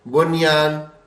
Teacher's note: اس میں بھی نون ساکن کے بعد یا لیکن غنہ نہیں ہوتا